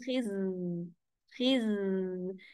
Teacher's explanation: خز میں آپ کی زبان نیچے والے دانتوں کے پیچھے ہے، اور اس کی جو آواز آپ کو سیٹی جیسے چلتی نظر آتی ہے، تو اس میں ہماری زبان کا کچھ حصہ تعلق کے قریب ہو جاتا ہے۔